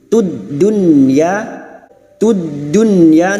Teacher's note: nun sukun bertemu ya, idhar wajib, harus jelas membacanya tanpa mendengung